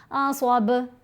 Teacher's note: با کے اوپر کلکلا کیا, یعنی با کی آواز کو تھوڑا ہلایا جائے گا. پھر میم ساکن ہے, اس کے بعد با آ رہا ہے.